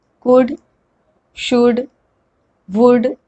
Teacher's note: we are not pronouncing the L